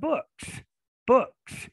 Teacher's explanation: we can clearly hear the S, and the S comes after the voiceless K